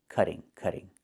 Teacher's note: And in America, we change the T to a fast D when it's between vowels, like this.